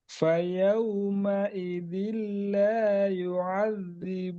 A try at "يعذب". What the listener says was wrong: Bu pendek.